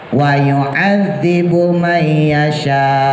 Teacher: harus dikembalikan ke hukum mat wajib, yaitu 6 harokat, ya. Jadi dibacanya wa yu'adzibu may yasha gitu.